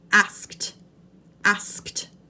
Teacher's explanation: it asked this is a tricky one for your mouth because you have to produce the K sound and then the T sound but it's still only one syllable